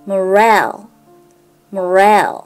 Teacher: Morale、▁ストレスが後ろの母音にあることに注意しましょう。